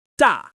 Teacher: Your voice starts high and falls quickly to a lower pitch. This tone carries a firm, confident energy. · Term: fourth tone